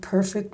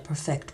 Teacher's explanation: we tend to accent the first syllable of the noun and the adjective but the second the verb